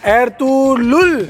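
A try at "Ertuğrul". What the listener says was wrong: नहीं लुल नहीं है, लुल नहीं है, एर्तुरुल। हाँ एर्तुरुल। एर्तुरुल।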